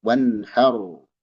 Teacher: Wan jelas izhar, wanhar ra tebal lagi.